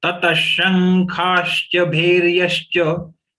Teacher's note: This is again the anuswar of sh got converted to nga because the next letter is kha.